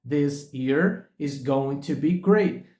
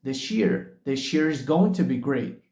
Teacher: this com ear a junção dessas duas palavras surgiu daí o som de X